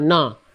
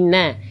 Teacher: huruf nunnya jangan terbawa tebal huruf shadnya karena shnya shadnya ingin tebal nnya ikut tebal No Bukan no